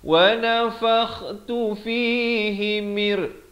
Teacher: Masuk tanpa dengung. Bukan beserta dengung, masuk tanpa dengung. Idgham bila gunnah.